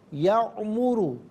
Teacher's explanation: را پر پیش ہے، را کو پر کر کے پڑھیں گے